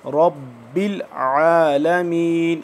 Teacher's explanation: आइन को हम हलक से निकालेंगे सही करके थोड़ा सख्ती से।